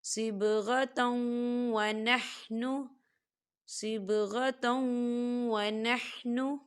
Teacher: من اللہ صبغۃ ونحن، صبغۃ ونحن، یہاں دیکھیے تا کے اوپر تنوین ہے اور تنوین کے بعد واو آ رہا ہے، اور واو جو ہے حروف یرملون میں سے ہے، تو یہاں پر ادغام ہوگا تھوڑا سا غنے کے ساتھ